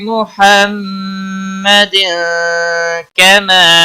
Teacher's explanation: تنوین کے بعد حروف اخفا کا کاف آیا اخفا حقیقی ہوگا.